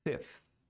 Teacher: Cai o V, entra um F e o TH.